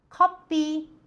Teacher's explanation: 後ろの▁P▁は激音なので息を出して▁P▁です。